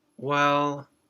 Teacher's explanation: when we're expressing uncertainty or hesitation we sometimes say well this is similar to the first tone in chinese